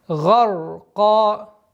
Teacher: удлинение в размере двух огласовок при аннулировании танвина